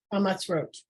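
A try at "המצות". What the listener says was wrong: No, it's not a resh, it's a vav, it's a vowel. Ha, ma, hamat, sot.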